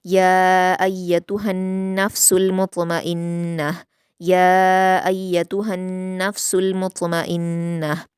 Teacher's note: मुत्मइन्नह में त्वा पर कलकला करेंगे और नून पर गुन्ना करते हुए गोलता को हा साकिन में वक्फ करेंगे